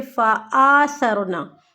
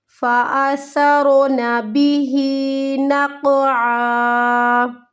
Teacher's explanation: صبحا فالمغیرات صبحا فأثرن به، دونوں کو نہیں کھینچنا، یہاں پہ ہماری اکثر غلطی ہوتی ہے فآثرنا، آ کو کھینچنے کی غلطی، آ کو ہمیں نہیں لمبا کرنا